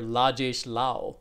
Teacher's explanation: So the ra gets mapped to a la. And that's because, they're born in an environment where there's no need or there's no distinction between those kinds of syllables, right?